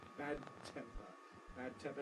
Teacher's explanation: we keep our tongue in place just like a Double T but it starts voiced bad and then becomes voiceless